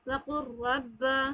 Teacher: قاف کو ڈائریکٹ را میں مل جائیں گے، وقر رب، اس طریقے سے۔ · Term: ادغام متقارب